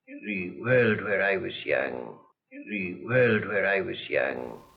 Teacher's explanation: His r is normally an alveolar approximant, r, similar to the sound I use, but sometimes it comes out as an alveolar tap.